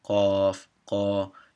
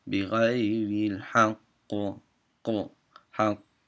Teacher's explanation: like a little snip of the head of the letter, and then stop, so you don't get into the vowel part